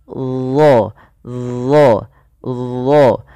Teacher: pangkal lidah kita kita angkat ke langit-langit agar menempel ya supaya menebalkan huruf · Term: istila